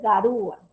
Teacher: Entonces ahí la vocal cerrada suena más fuerte, se le coloca la tilde